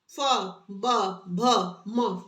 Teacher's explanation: दोनों होठों का यूज हो रहा है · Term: द्योष्ठ